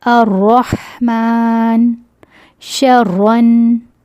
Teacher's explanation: اگر را مشدد پر فتح ہے تو فتح کی وجہ سے اس را مشدد کو موٹا پڑھیں گے، مشدد کو کھولیں گے نہیں، ایز اٹ از پڑھیں گے۔